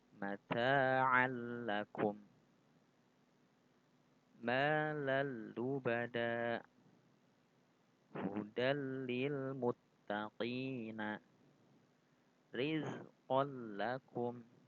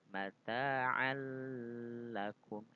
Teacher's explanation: memasukkan atau meleburkan nun mati atau sukun dan tanwin ya, tanpa disertai dengan dengung ya. Hukum jadi membaca idgham bila gunnah ini itu tidak disertai dengan dengung.